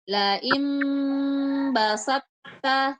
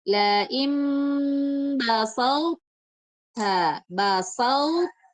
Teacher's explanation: diberikan sifat ketebalannya dengan menghilangkan kolkolahnya ya. Tidak pakai kolkolah kan harusnya basal tota. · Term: sifat itbak